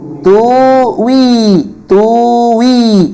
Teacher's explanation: pada dua kalimat tuwi dan tuwi maka coba hamzahnya tuwi diibdalkan Hamzah sukunnya tadi diibdalkan menjadi wau sukun